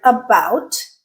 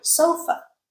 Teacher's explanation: In both cases, the A turned into the schwa sound.